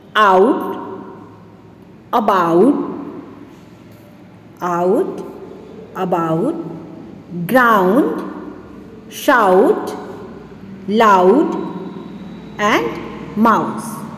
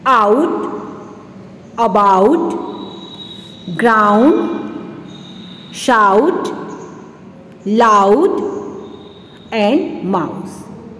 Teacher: In these words, the vowel sounds glide from the O sound to U sound to give the A sound.